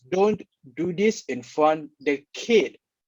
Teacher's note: the speaker actually stresses on the word kid in this sentence